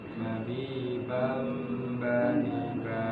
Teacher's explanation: tidak boleh buru-buru mabi bam bani ba, tapi ditahan bentar ada dengungannya